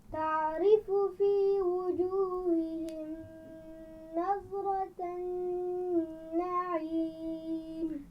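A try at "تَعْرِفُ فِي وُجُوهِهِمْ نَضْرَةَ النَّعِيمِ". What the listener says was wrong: ایک تو تعریف عین کے مخرج کا خیال رکھنا ہے، دوسرا وجوہہم کی میم پر غنہ نہیں ہوگا.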